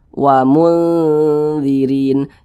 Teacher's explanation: Jangan juga dibaca wamun. Jangan juga condong ke n, jangan juga condong ke eng. Jadi di tengah-tengah dia. Wa mundzirin, kemudian kita dengungkan, kita gunakan, jadi suaranya itu kita tahan, kita panjangkan sejenak. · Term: ikhfa hakiki awsat